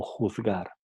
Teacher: consiste en una articulación más suave y sonora próxima a D